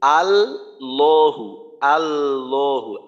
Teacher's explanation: যদি আমি এইভাবে বলি আল্লাহু আল্লাহু, আল না আল্লাহু, যে লামটাকে তাসদীদ থাকার কারণে প্রথমে জজমের মতো করে পড়ব, তো প্রথম লামটাকেও মোটা করব, দ্বিতীয় লামটাকেও মোটা করব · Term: লাম মোটা